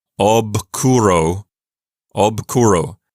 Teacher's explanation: you have to turn off your vocal cords going from the voiced to the voiceless